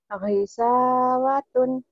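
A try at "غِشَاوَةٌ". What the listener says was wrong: Oh iya memang kau punya hutang shin ya. Gisha. Iya. Angin ngecesnya gak ada. Gisha. Shh. Ghisawatun.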